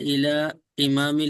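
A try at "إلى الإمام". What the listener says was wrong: इलल इमाम, इला नहीं, अब इसमें गलती नहीं करनी, इलल इमाम इल हाफिजी।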